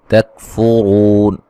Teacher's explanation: را کو موٹا ادا کریں گے ، واو مدہ ہے اور وقفاً بڑی مد کے ساتھ پڑھ